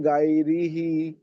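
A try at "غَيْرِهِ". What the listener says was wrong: নয়, গইন ইয়া জাবার গই, মুখ গোল হবে, গই। রি টান হয়ে যাচ্ছে, হারাকাত আছে।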